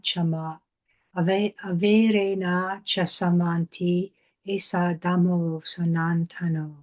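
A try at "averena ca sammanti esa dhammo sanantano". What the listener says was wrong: Okay, that was pretty good, but just can you do this last two pads again,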